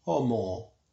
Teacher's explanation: la H está ligeramente aspirado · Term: ligeramente aspirada